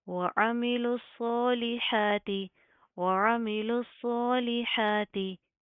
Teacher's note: लाम ज़ेर ली होता है, इसको भी आपने ले नहीं करना, मजहूल नहीं करेंगे, मारूफ पढ़ेंगे · सौत को प्रॉपर मुंह को पुर करके पढ़ेंगे, मोटा पढ़ा जाएगा, खड़े ज़बर की अदायगी करेंगे फिर, ठीक है।